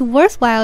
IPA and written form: ˋwɝθˋhwaɪl (worthwhile)